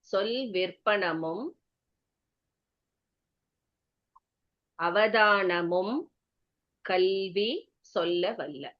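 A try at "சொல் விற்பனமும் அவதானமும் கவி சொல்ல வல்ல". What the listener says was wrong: கல்வி இல்ல மேம், கவி மேம்.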